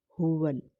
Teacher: یہ ہا سینے سے نکالیں گے